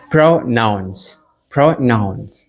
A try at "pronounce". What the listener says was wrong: You said proud nouns. Oh, but the word is pronounce. One word, not two words. Pronounce. It means to say a word the correct way.